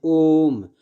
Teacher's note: ओम को बोलने में दीर्घ स्वर से ज़्यादा टाइम लग रहा है, अतः इसे प्लुप्त स्वर कहा जाता है।